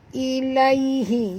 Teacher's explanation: ya di sini sifatnya lin lembut